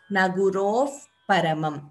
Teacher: For example, Naguroho Paramam, we chant it as Nagurof Paramam. We don't chant the Visarga completely. That is Upadhmaniya.